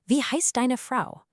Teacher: your voice actually has to drop down at the end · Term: sentence melody